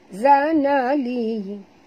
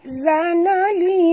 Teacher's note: zanali li panjang, ya zanali 4 hingga 5 harakat mad jaiz kerana pertemuan ya mad dengan hamzah